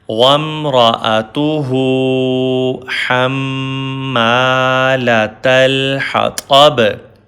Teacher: Make kalkala or echo sound on ba.